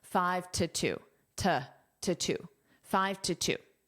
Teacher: But this two is unstressed so it's pronounced as t.